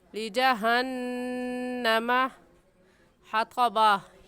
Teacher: लिजहन्नमा में नून मुशद्दद है और नून मुशद्दद पर गुन्ना होता है, इसलिए ऐसे पढ़ेंगे लिजहन्नमा हतबा।